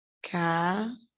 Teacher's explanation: A sílaba forte é o né, e ela está na última sílaba. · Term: oxítona